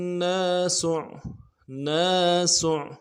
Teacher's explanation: ناس میں نون کے بعد الف مدہ ایک الف مدار میں کھینچیں گے۔ سین کو عین کے ساتھ ملانا ہے، سین کی سیٹی باریک ہوگی اور عین کو موٹا ادا کرنا۔ · ہا کو نون کے ساتھ ملانا ہے، نون کے اوپر تشدید ہے